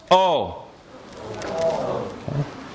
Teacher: created by taking the tongue bringing it straight back and rounding the lips raising it or lowering it neither of those it's O transcribed